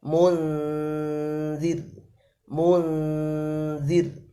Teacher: Kalau zal itu meringis, harus tipis. Munzir ya, makhrajnya pucuk ya, pucuk lidah ditekan di pucuk depan lidah ditekan di belakang gigi jari atas mengenai gusi sedikit ya.